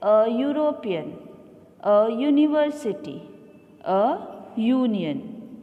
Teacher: Children, in the given examples, the word begin with a consonant sound Y